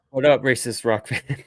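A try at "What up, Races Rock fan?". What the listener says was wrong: You don't say that correctly. It sounded like you said racist rock fan. But it's races fan rock. Races, as in NASCAR, as in Indy, as in Formula One.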